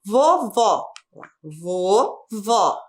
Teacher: O que aconteceu com as palavras? Todas têm a última sílaba tônica. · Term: oxítona